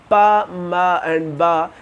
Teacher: जब अपर और lower lips मिलते हैं तो हमारा ये साउंड प्रोड्यूस होता है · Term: बायलैबियल साउंड्स